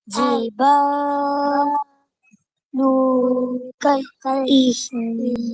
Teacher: lu satu harakat saja, bukan dua harakat. Lu kal lepas tu baru sebut nun mati.